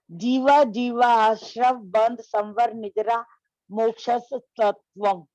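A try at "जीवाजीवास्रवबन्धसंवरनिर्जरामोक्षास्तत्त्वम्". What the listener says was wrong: उच्चारण अशुद्ध है, जीवा जीवा आश्रव नहीं है, जीवा जीवाश्रव, जीवा जीवा आश्रव तो दो बार आ नहीं है। जीवा जीवाश्रव मोक्षास्तत्वम्।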